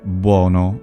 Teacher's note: The vowel breaks. Essentially, we get an initial glide